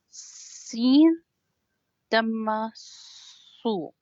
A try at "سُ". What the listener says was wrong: Su, it's not loud. Very don't grip on your tongue. Seen, no, seen. su. Soft reading. Grip, no, don't grip.